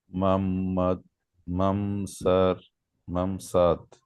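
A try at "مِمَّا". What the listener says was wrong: মাম না, এটা তাসদিদের নিচে থাকলে জের হয়, তাহলে কিভাবে হবে? হ্যাঁ, মিম মাসাদ। মিম মাসাদ, এই যে দেখছেন নুন সাকিনটা যেটা আছে, এই নুন সাকিনটা কি হচ্ছে না, উচ্চারিত হচ্ছে পরের শব্দের সাথে মিলা যাচ্ছে। মিম মাসাদ।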